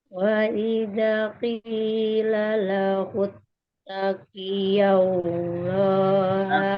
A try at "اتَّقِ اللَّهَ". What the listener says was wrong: Taqillah, bukan taqiyallah. Taqillah, langsung.